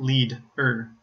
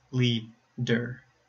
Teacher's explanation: the D at the beginning of the second syllable not the end of the first syllable